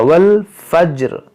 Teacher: जीम में कलकला होगा